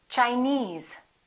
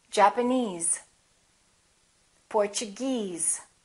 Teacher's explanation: if the word ends with e s e we stress the suffix